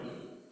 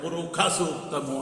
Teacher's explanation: శుక్ల యజుర్వేదం వాళ్ళు ఎక్కడైతే షణ్ముఖ శకారం వస్తుందో వాళ్ళు దాన్ని ఒత్తు ఖా అని పలుకుతారు. మనం పురుష సూక్తము అంటే వాళ్ళు పురుఖ సూక్తము అంటారు.